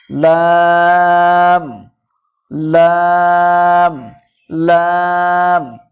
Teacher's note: জীবের আগার কিনারা এবং সামনের উপরে দুই পাশের দাঁতের গোড়ার সাথে লাগিয়ে উচ্চারিত হয় লাম